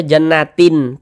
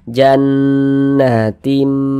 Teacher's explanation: dibaca jannatin Tin jangan tapi berubah menjadi mim jannatim kemudian kita kita dengungkan jadi suaranya itu kita tahan kita panjangkan sejenak